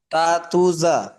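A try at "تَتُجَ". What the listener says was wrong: হ্যাঁ এখানে ওই তাতুজা বলছেন না এখানে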